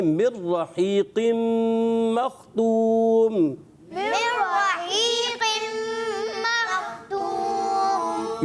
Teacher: یہاں نون کی ادائیگی نہیں ہوگی، نون را میں مل گیا تو یہاں نون کی آواز نہیں آئے گی